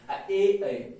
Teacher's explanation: कंठ से अंदर से आवाज आ रहा है, तालु को भी उपयोग हो रहा है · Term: कंठ तालु